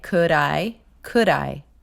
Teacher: You bring that D over to the I sound and it's could I. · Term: flaps